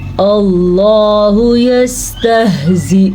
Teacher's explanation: اللہ کا نام پر پڑھنا ہے کیونکہ اللہ کے نام سے پہلے حرف پہ زبر ہے. اللہ کے الف پہ زبر ہے تو لفظ اللہ کو ہم پر پڑھیں گے.